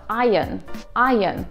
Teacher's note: В британском звук R не произносится, поэтому получается iron.